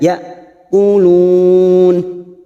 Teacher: Ya hamzah sukun sifatnya siddah tegas membacanya